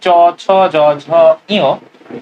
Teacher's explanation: চ, ছ, জ, ঝ, ইয়, এরা উচ্চারণ হয় তালু থেকে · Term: তালব্য